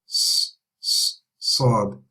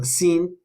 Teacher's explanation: So we're going to raise all of our tongue. So Seen is raised, but Sad, the back of the tongue is also raised. Okay, and we can hear sort of a whistling sound.